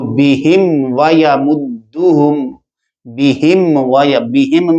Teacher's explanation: بہم بہم میں میم ساکن ظاہر ہو جائے گی اور آگے فوراً ادا کریں گے، غنہ وغیرہ نہیں ہوگا